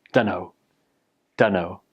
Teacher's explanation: And then don in don't becomes done. So put it together, dunno.